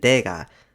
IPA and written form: dɛga (내가)